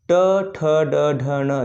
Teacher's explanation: जब हम बोलते हैं तो इस उच्चारण के समय हमारी जीभ हल्की सी मुड़ती है, तालु को छूती है, तो मुड़ती है इसलिए इसे मूर्धन्य वर्ग के अंतर्गत रख लिया गया है।